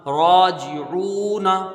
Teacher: پیش عو، نون زبر نا، راجعون، ٹھیک ہے، راجعون، را کو ایک الف مقدار کھینچ کے پڑھیں گے ، الف مدہ ہے، جیم کے نیچے زیر ہے جلدی پڑھیں